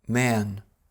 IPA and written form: mɛən (man)